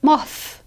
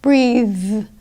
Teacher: Strong THs -- MOTH -- press a lot of air in, whereas Soft THs -- BREATHE -- very little air is there.